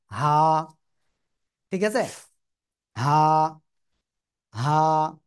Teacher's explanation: গলার শুরু থেকে উচ্চারণ হবে হা এক আলিফ টান